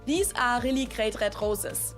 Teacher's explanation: I didn't really pronounce the R in the word are at all